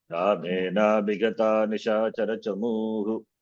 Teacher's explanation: When I pause, Visarga is pronounced.